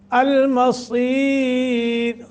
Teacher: را کو باریک پڑھیں گے، ما قبل یا ہے ساکن، را باریک ہوگا